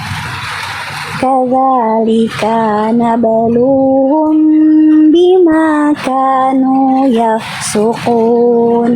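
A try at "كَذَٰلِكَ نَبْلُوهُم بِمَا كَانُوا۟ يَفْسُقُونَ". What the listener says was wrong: Nah, ka-nya berapa harokat? Kadzalika. Ka yang itu? Satu ha? Satu. Ka yang ini. Ka yang ini. Kadzalika. Ka yang ini kepanjangan nih, ya.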